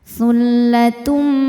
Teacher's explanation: Selanjutnya ada hukum idgham bighunah karena ada tanwin dhammah menghadapi huruf mim. Cara bacanya bunyi tanwinnya ini lebur ke mim. Tsullatum sambil dengung tahan.